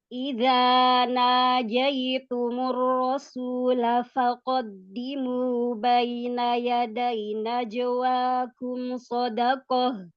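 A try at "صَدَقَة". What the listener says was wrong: Tebalkan sodnya. Shadaqah.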